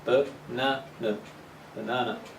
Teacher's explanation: the strong syllable is the second one b banana the first and the third syllable are uh middle